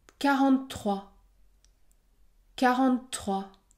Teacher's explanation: ici je prononce un T long